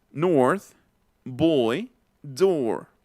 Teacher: No es North, boy, door, porque no es una O que esté colocando aquí adelante, es una O que estoy colocando más atrás